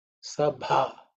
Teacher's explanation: So this bha is the fourth letter in the pavarga. So it has to be aspirated with the force.